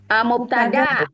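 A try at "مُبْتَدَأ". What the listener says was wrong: Ya, mubtada, bukan mubtada karena nggak panjang. Mubtada.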